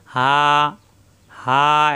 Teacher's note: 4 আলিফ পরিমাণ টান হবে, হা, মুখ খোলা থাকবে, হা করে উচ্চারণ করতে হবে কণ্ঠনালীর শুরু থেকে,